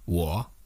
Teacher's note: So now let's move on to the third tone. It's a falling and rising tone.